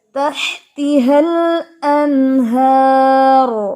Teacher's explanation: را ہیوی ہوگا. ہم یہ پڑھیں گے تحتیہا الانہار, زبان تھوڑی سی اٹھا کے ہار, اس کو یہ نہیں پڑھنا ہار, ہار نہیں ہے یہ, ٹھیک ہے.